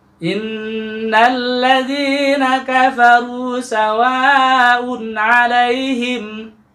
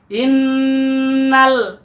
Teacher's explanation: setiap mim dan huruf nun yang bertanda tasdid ini akan kita baca dengung, sengau, hidung, dan juga panjangnya selama 2 harokat atau 2 ketukan ya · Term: nun yang bertasdid